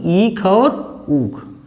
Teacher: ऐसे स्वर जिनका उच्चारण करते समय सबसे कम मात्रा में मुंह को खोलना पड़ता है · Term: समृत स्वर